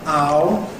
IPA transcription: aʊ